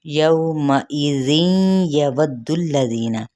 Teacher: वाव की ज़बर को दाल के साथ मिलाएंगे और दाल की पेश को लाम के साथ मिलाते हुए लाम की हरकत को भी लंबा नहीं करेंगे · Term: इदगाम माल गुन्ना